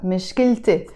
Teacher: Again, it's one of these words that finishes with the T مربوطة. On its own, you just say مشكلة. But when you add a possessive ending to it, you have to pronounce the T مربوطة.